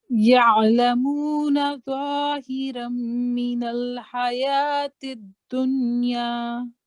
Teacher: زو جو ہے یہ تھک لیٹرز میں آتا ہے، جس کو منہ گول کر کے تو اس سے آواز نکالنی ہے، تھک ذرا آواز نکالنی ہے ہونٹ کھول کے.